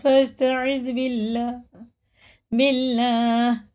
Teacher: اللہ کا نام زیر سے باریک ہوگا